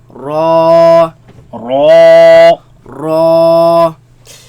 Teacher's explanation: Raise the back of the tongue. Make it heavy.